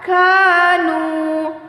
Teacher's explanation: Nu waw sukun dipanjangkan 2 harokat